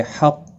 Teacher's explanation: قاف مستعلیہ ہے پر پڑھا جائے گا